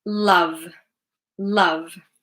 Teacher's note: The ending is Vv, vv, vv. It's voiced.